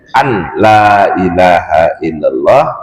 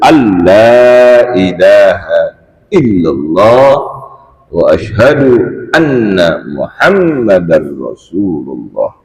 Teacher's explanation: membaca nyata huruf nun pada kalimat alla ilaha illallah, contohnya menjadi an la ilaha illallah, maka batal salatnya, batal bacaannya, batal salatnya, karena ini merupakan rukun.